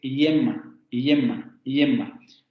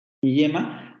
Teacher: El dorso de la lengua va hacia el paladar, yema, pero no se va a pegar tanto como para producir una consonante, pero tampoco se va a alejar tanto como para producir una vocal, ¿no? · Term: aproximante palatal sonoro